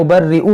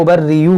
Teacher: دیکھیں یہاں پر صحیح لفظ ہے ابرئو، یہ حمزہ پڑھیں گے، حمزہ پیش او، حمزہ پیش او اور یا پیش یو، یو اور او بہت فرق ہے دونوں میں